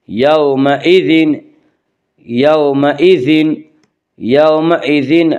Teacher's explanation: لتسألن یومئذ، واو لین وہ واو جو ساکن ہو، اس سے پہلے زبر و واو لین کو نرم آواز کے ساتھ جلدی پڑھیں گے